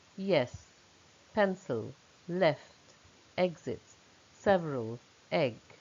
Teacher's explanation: It is short. E is a short, open mid front vowel, and the lips are slightly spread.